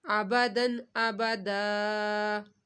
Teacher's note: دن کے اوپر گنہ نہیں کرنا کیونکہ اس کے بعد حمزہ آ رہا ہے